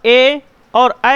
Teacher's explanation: ए और ऐ जब बोलते हैं तो कंठ प्लस तालु का प्रयोग करते हैं।